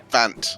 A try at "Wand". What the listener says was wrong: Wand. It's a D in the end. It's not as hard. Wand.